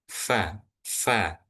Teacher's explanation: Huruf fa itu ee diucapkan dengan menempelkan gigi atas dengan bibir bawah